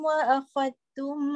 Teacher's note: kalimah wa akhadtum yang mana diidghamkan zal dalam ta. Nampak dalam Quran dia buat sabdu kan atas ta.